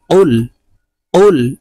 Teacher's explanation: কফ জিহ্বার গোড়া থেকে